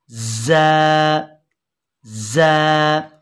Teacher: ज़बान की नोक और दोनों दांतों के अंदरूनी किनारों से अदा होगी